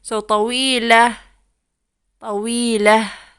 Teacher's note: there's no vowel at the ta مربوطة. We read it as a H